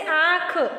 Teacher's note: जैसा कि आपने इन दोनों में देख लिया कि इसका जो उच्चारण करते समय मुख और नासिका, अनुनासिक और अनुस्वार में अंतर जो है हमने यहाँ देखा कि अनुनासिक को बोलते समय ध्वनियों का उच्चारण मुख और नाक दोनों से होता है, और अनुस्वार का जो है बोलते समय हवा नाक से पूरी तरह बाहर निकल जाती है। · अनुनासिक के उच्चारण में नाक से सांस बहुत कम निकलती है और मुख से अधिक निकलती है